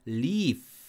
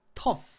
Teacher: 그러니까 푸 하고 모음을 넣어서 소리가 끊어지면 안 됩니다. 이게 지속음이니까 그냥 윗니빨로 아랫입술을 깨문 상태에서 바람이 지속적으로 빠져나와야 합니다